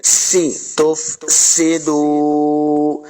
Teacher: سین پہ سیٹی کی آواز آئے گی